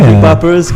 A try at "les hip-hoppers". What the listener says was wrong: Les hip-hoppers. The H is silent.